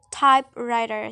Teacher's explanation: the stress is on the first element type